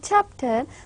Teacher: when we say chapter, the first part, chap, is more stressed and more clear and more loud.